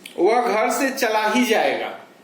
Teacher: वह घर से चला ही जाएगा, ही पर बलाघात है, यानी निश्चित रूप से वह जाएगा ही, रुकने की स्थिति नहीं है।